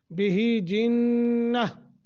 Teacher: نون مشدد ہے، غنہ کر کے پڑھیں گے۔ وقف کی حالت میں نون تنوین کو ختم کر کے اور تا جو ہے اس کو بھی ختم کر دیں گے، صرف رہ جائے گا ہا، تو اسے ساکن کر کے پڑھیں گے، جنہ۔